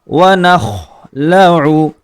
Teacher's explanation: خوا کا مخرج حلق کے آخری حصے سے لفظ خوادا ہوتا ہے، حلق کا وہ حصہ جو ہماری زبان کی جڑ کے پاس ہوتا ہے ، اور لفظ خوا حروف مستعلیہ میں سے ہے، اس کو